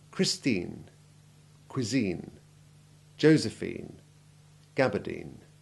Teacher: polysyllabic words with INE endings that have the long I3 sound, all of which carry stress